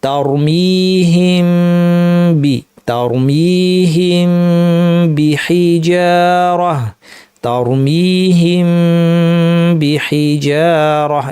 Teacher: আমরা দুই ঠোঁট লাগিয়ে মিম উচ্চারণ করবো, মিমের গুণাটাকে বর্ধিত করে দেবো এবং মিম বলার যে অবস্থা, সেই অবস্থাকে ঠোঁটকে পূর্ব অবস্থায় না এনে সরাসরি বাতে চলে যাব। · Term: মিম সাকিনের ইখফা